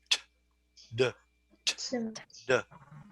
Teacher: I'm putting the tip of my tongue on the alveolar ridge.